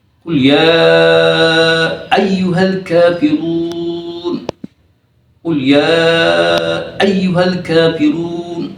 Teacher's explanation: Majais itu boleh dia 2 harkat, tetapi lebih baik 4 harkat.